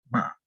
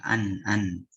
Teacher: Pokoknya sifatnya tuh udah gunnah. Makrotnya juga mim sama nun ke hidung.